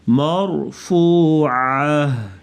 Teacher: را ساکن سے پہلے زبر ہے، مرفوعہ را تو یہ اس را کو موٹا پڑھیں گے.